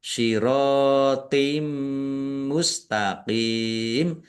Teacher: Bacaan idgham bighunah. Masuk dengan mendengung yaitu mendengung mim ditandai mimnya ada tasdidnya ditahan biar tampak mendengungnya.